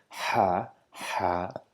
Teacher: This Ha, which is produced from the middle part of our throat by opening the mouth wide and producing a lot of air from our throat towards the mouth.